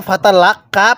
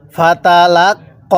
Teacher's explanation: এই কফের মধ্যে কিন্তু তিন আলিফ টান দিব